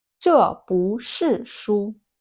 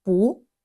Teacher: 不 normally has fourth tone, but before 是 it changes to second tone.